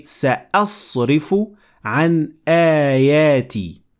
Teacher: We extend it a little bit longer when it is followed by the long vowel alif.